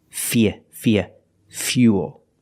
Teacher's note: with fuel we have the same spelling pattern but the pronunciation is a little different we put that Y sound in there